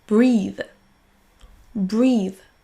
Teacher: les Français ont souvent tendance à remplacer ce son TH par un son Z, sans mettre la langue au niveau de vos dents.